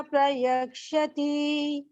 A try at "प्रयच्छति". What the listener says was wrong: प्रयच्छति प्रयच्छति। हाँ,क्षा नहीं, क्षत्रिय वाला नहीं है, चा और छा है ना, प्रयच्छति।